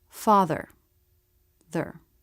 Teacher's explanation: Just go from the TH sound right into the R sound without trying to make a separate schwa. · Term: syllabic consonants